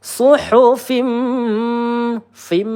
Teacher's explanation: idgham bighunah di mana langsung masuk ke huruf mim kita tahan ya dua atau tiga harakat sambil kita ayun nada rosnya fim.